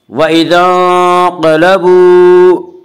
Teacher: قاف کو پر پڑھیں گے، قاف حروف مستعلیہ میں سے ہے، حروف مستعلیہ 7 ہیں جن کا مجموعہ خصہ ضغط قزا جو ہمیشہ ہر حال میں پر پڑے جاتے ہیں۔